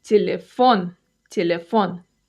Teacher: Stress is on the last syllable.